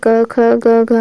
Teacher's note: कंठ में आते हैं क ख ग घ वाला आता है।